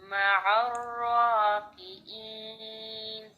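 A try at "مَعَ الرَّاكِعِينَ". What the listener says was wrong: دوسرا عین جو عین زیر عی پریکٹس کریں، ٹھیک ہے. آپ نے زیادہ پریکٹس کیا کرنی ہے، عین زیر عی، عین زبر ع، عین پیش عو. یہ آپ نے 3 حرکات کے ساتھ عین کی پریکٹس کرنی ہے.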